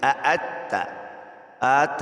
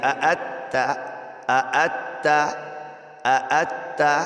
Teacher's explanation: یاد رکھیے دونوں حمزہ ہیں، ان دونوں حمزہ کو واضح کر کے پڑھنا ہے اور ظاہر کر کے پڑھنا ہے، اس میں نرمی نہیں ہے، سختی ہے